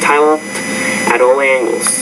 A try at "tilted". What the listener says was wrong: You want to say tilted. So there's 2 syllables there. Because the T's at the end of the word, when you put the ED on there, you have to add a new syllable there. So tilted at all angles.